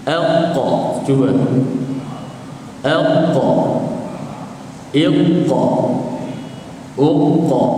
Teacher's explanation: Apabila pangkal lidah menyentuh di bahagian di langit lembut, keluarnya huruf qaf.